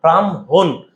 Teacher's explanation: ম আগে চলে আসছে হ পরে চলে গেছে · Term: হর সাথে ম